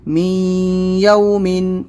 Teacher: میم یا زیر می، یا واو زبر یو، می یو، میم 2 زیر من، می یومن۔ جو یہ می آواز ہے یہی غنہ کرنا ہے، ناک میں آواز لے جانا ہے